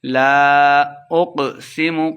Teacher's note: قاف کو موٹا پڑھنا ہے، اقسم لمبا نہیں کریں گے۔